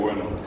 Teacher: Nosotros escribimos nomás la B larga, pero nunca jamás, nadie acá dijo porque se juntan los labios y explotan